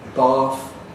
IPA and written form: bɑːθ (bath)